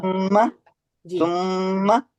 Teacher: गुन्ना किए बगैर आगे बढ़ ही नहीं सकते, तो 2 काउंट